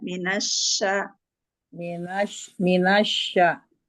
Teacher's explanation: Ya, ketika minas itu jangan ditiup, jangan dengan bibir, tapi tengah lidahnya. Shin itu mahrojnya tengah lidah, hampir menyentuh langit-langit tengah. Jadi ada space untuk mengeluarkan udara. Asya didorong saja.